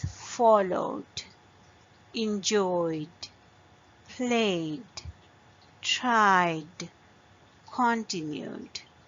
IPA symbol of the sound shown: d